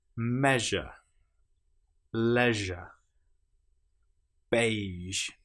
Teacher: Now, with the j, we engage our vocal cords. With sh, we don't.